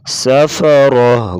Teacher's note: گول تا آ گیا اسے ہا ساکنہ سے بدلیں گے